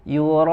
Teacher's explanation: setelah madnya ada hamzah, dalam kata yang sama dibaca 4 sampai 5 harokat